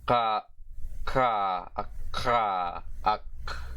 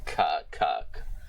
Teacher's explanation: the further backness of normal vowels instead of the more forwardness of English vowels